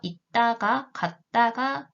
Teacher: 받침의 디귿도 두 번째 음절의 디귿도 안 울림 소리이니까 두 번째 음절의 첫 소리인 디귿은 된 소리, 뜨로 발음이 되게 되죠